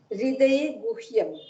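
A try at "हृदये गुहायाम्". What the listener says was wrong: No, Guhayam. Guhyam is the adjective, okay, but Guhayam is the locative in the heart, in the deep heart.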